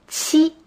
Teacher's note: Kill in pinyin is pronounced qi. This is a combination of a T and a CH sound. Qi. This is similar to the pronunciation of cheek in English.